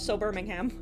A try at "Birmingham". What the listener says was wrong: Pronouncing the H in Birmingham, by the way.